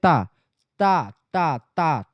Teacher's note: ता वर्ग जो होता है दंत ध्वनि है।